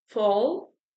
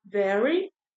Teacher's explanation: Essa parte em laranja, que é entre os lábios e o dente. É o som que acontece, que a gente faz entre os lábios e os dentes. Aqui a gente tem as letras F e a letra V. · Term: lábio dental